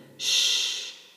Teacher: In the sound sh, we are going to discover that this sound does not produce vibration in the throat. It doesn't produce vibration in our vocal cords.